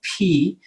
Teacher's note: p is a plosive sound okay and it's a it's a stop all right we're stopping the airflow